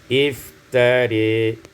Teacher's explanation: imalatu fathatur ra wal alif, dibaca imalah fathah ra dan alif menjadi iftari.